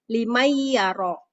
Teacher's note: jadi Nun matinya itu langsung masuk ke dalam huruf ya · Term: Idgham Bighunnah